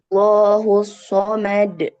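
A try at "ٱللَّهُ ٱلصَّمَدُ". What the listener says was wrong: Jangan somad, jangan ditahan dulu. Allahus somad.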